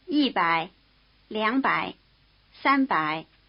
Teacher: notice that the low tone of by triggers some tone changes in the numbers which occur before it the high tone of e changes to falling tone and the · triggers some tone changes in the numbers which occur before it the high tone of e changes to falling tone and the low tone of young changes to rising tone